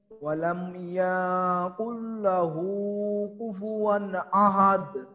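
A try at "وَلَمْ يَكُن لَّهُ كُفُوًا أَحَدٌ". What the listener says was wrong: এখানে ইয়াতে একটু টান হয়ে গেল না?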